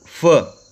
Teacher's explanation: consonants articulated with the lower lip and the upper teeth